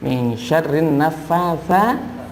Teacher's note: Min syarrin naffatsa, fa itu lidahnya agak digigit sedikit ya. Fa yang tipis, jangan berdesis ya.